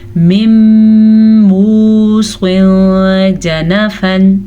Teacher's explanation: تنوین کے بعد حروف اخفا میں سے جیم آیا ہوا ہے تو ہم تنوین کی آواز کو چھپا کے پڑھیں گے اور غنّے کے ساتھ پڑھیں گے. مِن مُوصٍ جَنَفًا أَوْ إِثْمًا فَأَصْلَحَ.